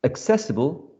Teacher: higher pitch that's why they're going to carry the primer stress the second syllable is the stressed syllable